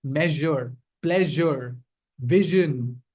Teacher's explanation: it's a combination of the z and the sh sound. When you combine these two sounds, it makes up zh. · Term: zh sound